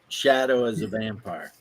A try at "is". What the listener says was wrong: I'm sorry, you mispronounced is wrong. It's not as, it's is. Shadow is a vampire.